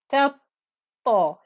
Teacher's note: Give enough time to show that there is a ta with a shadda. Ta, ta. You can hear the thickness of the ta as well.